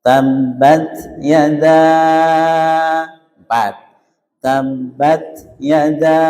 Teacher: Yada, kita panjangkan sampai 4 ya.